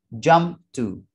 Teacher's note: Kemudian t di sini ialah suara consonant. Jadi suara p ketemu dengan suara t sehingga tidak diplosif. Jadi plosifnya tidak dirilis atau unrelease. Jadi tidak dibaca jump to tapi jump to.